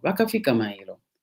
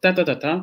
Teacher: you go ta ta ta ta 3 times, but then you fall before you say the word for tomorrow, mailo. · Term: ternary spreading